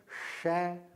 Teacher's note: इसको कठोर तालु से छू कर बोलिए श